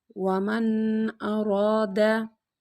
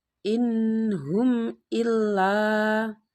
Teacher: Cara membacanya jelas tanpa mendengung. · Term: idhar halki